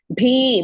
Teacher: ಭಿ ಇಸ್ ಮಹಾಪ್ರಾಣ ಅಂಡ್ ದೀರ್ಘ